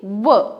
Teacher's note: जो व है दांत और ओष्ठ, दोनों के मिलने से उच्चारित होता है। अब बोलकर देखिए, व दांत और ओष्ठ दोनों लगते हैं इसके प्रोनाउंसिएशन में, तो इसीलिए इनको दंत और ओष्ठ कहा जाता है।